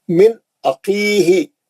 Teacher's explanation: من عقیہ، نون ساکن کے بعد حمزہ ہے، یہ حروف حلقی ہے، یہاں پہ اظہار حلقی ہو رہا ہے، ہم نون کو جلدی پڑھ رہے ہیں